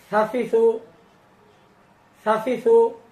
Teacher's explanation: জিহ্বার আগা সামনের উপরে দাঁতের আগার সঙ্গে লাগাইতে হবে।